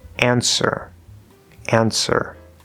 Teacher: W is silent, we're going to go straight into that er vowel sound, an ser. So, it sounds just like ser, answer.